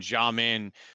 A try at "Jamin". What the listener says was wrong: Jamin. an I, not an A.